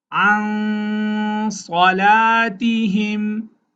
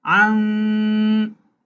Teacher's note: ikhfa, a nasal sound equal to one alif should be made